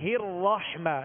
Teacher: یہاں را پر زبر ہے، را کو پر پڑھیں گے